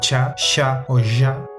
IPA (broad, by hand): tʃa ʃa o ʒa